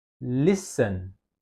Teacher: Listen ya dia cenderung seperti ke atas ya listen ya dia lebih ke atas lebih ditekan. Listen listen dia enggak bisa ee datar ya.